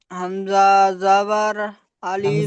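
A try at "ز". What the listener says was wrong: হামজা নয়, এটি এখানে আমরা হামজা পড়ে এসেছি, যার কারণে এখানে আর হামজা আসেনি।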